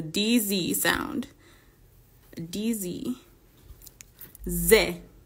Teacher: this sound is going to be a combination of a D in English and a z in English so however you manage it Z so it's a DZ sound